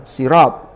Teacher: Sin menjadi sod karena dipengaruhi to. Tapi antara sin dan to itu tidak pertemuan yang langsung. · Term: asimilasi yang taba'udiyah